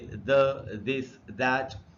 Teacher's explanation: टीएच से अगर द बने, जैसे द, दिस, दैट, तब वोकल कॉर्ड्स में वाइब्रेशन होती है। इसलिए टीएच से अगर द बनेगा तो वो वॉइस्ड साउंड है, ये हमको याद रखना चाहिए।